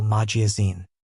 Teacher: in magazine the stress is on the final syllable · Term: Word stress